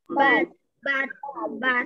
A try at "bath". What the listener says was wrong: Pero this, you remember, recuerda que esa T lo tienes que hacer cha, cha, bat.